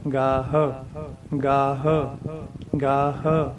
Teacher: ਗਾਹ ਐ ਬੋਲਣਾ, ਗਾਹ ਨਹੀਂ ਬੋਲਣਾ, ਗਾਹ ਨਹੀਂ ਕਹਿਣਾ, ਗਾਹ ਗਾਹ ਗਾਹ। ਹਾਹੇ ਦੀ ਸਾਊਂਡ ਦੇਣੀ ਹੈ, ਪਰ ਉਹਦੀ ਹਾਹੇ ਦੀ ਹਵਾ ਬਾਹਰ ਨਹੀਂ ਕੱਢਣੀ, ਮੂੰਹ 'ਚ ਹੀ ਰੱਖਣੀ। ਗਾਹ ਥੱਲੇ ਵਾਲਾ ਲਿਪਸ ਜੋ ਹੈ, ਥੱਲੇ ਵਾਲੇ ਲਿਪਸ ਨੂੰ ਅੰਦਰ ਨੂੰ ਖਿੱਚ ਲੈਣਾ।